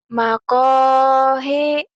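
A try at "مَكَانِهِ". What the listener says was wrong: Ini mah mem. Bukan H ini ya mim ya. Kalau H gede ininya posturnya gede ini H. Makomi.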